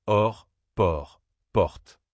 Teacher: Au ouvert, ta bouche s'ouvre davantage et le son descend un peu plus.